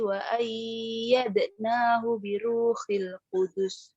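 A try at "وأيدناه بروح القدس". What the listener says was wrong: Oke, ulangi dari wa ayyadna. Wa ayyanya tidak dengung ya. Wa ayyad. Gitu.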